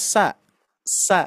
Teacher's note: Ternyata ujung lidah itu menempelnya ke gigi seri bawah gitu ya. Yang harusnya menempel atau menyentuh ke dua gigi seri atas, ini malah ke bawah gitu ya.